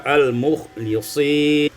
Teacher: dibaca dengan mengkasrahkan lam sehingga kita baca al-mukhlisin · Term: Kasrul lam